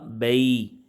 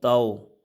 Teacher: حروف لین کو کھینچ کے نہیں پڑھنا، اس کو پڑھنے کا جو طریقہ ہوگا بغیر کھینچے بغیر جھٹکا دیے نرمی سے معروف پڑھیں گے۔